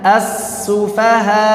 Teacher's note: Ditampakkan hamzahnya, belum cukup kalau begini as-sufaha, belum cukup, harus ada tampak hamzahnya. As-sufaha, langsung dimasukkan ke makhrajnya, tapi jangan berlebihan juga. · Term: nabar